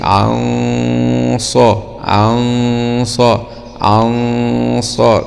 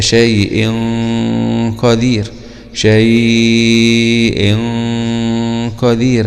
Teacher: طيب، هنا حرف مفخم من حروف الاستعلاء جاء بعد النون الساكنة، فغنة الإخفاء هنا تكون غنة مفخمة، تتبع الحرف الذي يأتي بعده